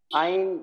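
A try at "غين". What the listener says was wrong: আইন হবে না, দেখুন তো, গইন হবে।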